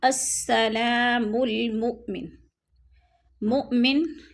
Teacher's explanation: مؤمن حمزہ ساکن ہے، اس کو جھٹکا دے کر پڑھیں گے۔